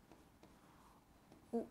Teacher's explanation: होंठों का प्रयोग हो रहा है उच्चारण करने में, होंठों का प्रयोग हो रहा है, और साथ में कंठ का भी प्रयोग हो रहा है क्या? साथ में कंठ का भी प्रयोग हो रहा है, तो ये हो जाएगा कंठ प्लस ओष्ठ।